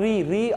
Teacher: री का उच्चारण करते वक्त जीभ का अगला भाग ही सक्रिय होता है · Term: अग्र स्वर